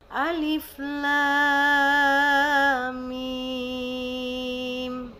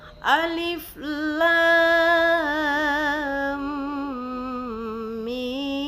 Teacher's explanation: Ketika saya membacanya tanpa nabar, maka syaddahnya tidak akan kedengaran sempurna. Sebagaimana hukum syaddah itu harus kita menekannya sebanyak 2 harokat, dan ini adalah mim syaddah harus kita gunakan. · Apa fungsi nabar di situ, atau kenapa kita harus menaikkan intonasi suara pada saat di akhir mat menuju ke mim itu? Fungsinya adalah agar mim syaddahnya atau nabroh pada syaddah tersebut dia tetap sempurna suaranya.